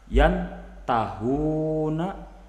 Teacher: Jadi di mana-mana apabila ada nun sukun atau tanwin bertemu salah satu huruf ikhfa yang 15 kita sebutkan tadi, maka cara membacanya harus disamarkan serta muraati gunah, dipertahankan gunahnya. Jadi jangan cepat-cepat.